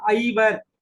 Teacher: இந்த ஐகாரம் தன்னை குறித்து தனித்து ஒலிக்கிற போது இரண்டு மாத்திரை நெடில் என்பதனால இது மொழிக்கு முதலில் வருகிறபோது ஒன்றரை மாத்திரை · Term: ஐகாரக் குறிப்பு